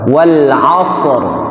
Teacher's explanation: Ro yang di al-asr itu rnya tebal dibaca karena sebelumnya huruf ada huruf mati. Kemudian sebelum huruf mati itu ada huruf fathah atau domah dibaca te tebal.